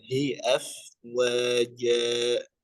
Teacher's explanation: Nah, hi-nya jangan masuk hidung ya.